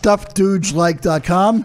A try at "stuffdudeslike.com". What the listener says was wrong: Dude, it sounds like you're saying stuffed dude.